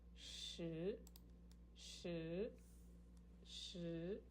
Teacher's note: the second tone, rising tone